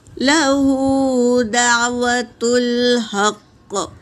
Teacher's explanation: ہا حرکت ہے، قاف بھی حرکت ہے، لیکن طائے مطلق آیا ہے، یہاں پر اگر ہم رکیں گے تو قاف کو ساکن کر دیں گے، قاف اگر کاف پر سکون آ جائے گا تو قلقلہ کبریٰ ہوگا، پڑھتے وقت آواز ٹکرائے گی